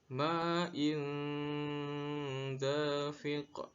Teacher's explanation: ada tanwin bertemu dengan huruf da, sehingga dibaca samar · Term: ikhfa